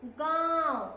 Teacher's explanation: तो नाक और गले से दोनों से साउंड आ रही है, स्वर आ रहा है · तो आपके नाक और गले से आवाज आ रही है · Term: चंद्र बिंदु